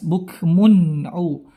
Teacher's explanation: ada tanwin bertemu ain, hukumnya izhar, jelas